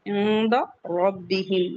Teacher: बा मुशद्दद है, सख्ती से पढ़ेंगे। रब्बिहिम रॉ को हैवी पढ़ेंगे।